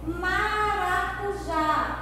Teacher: maracujá é um oxítona, porque a última sílaba é a mais forte, é a sílaba tônica